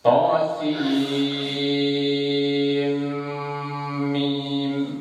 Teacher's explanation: Kalau di sini idgham bi gunnah. Tosin bacaan suaranya non harus diidamkan ke dalam suaranya mim, sehingga membacanya tosim.